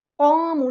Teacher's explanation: الف مد آ گیا تو ایک الف کے برابر لمبا کریں گے